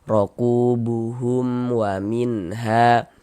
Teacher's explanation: Izhar halqi. Nah, baca jelas huruf nun sukunnya tidak berdenggung pendek saja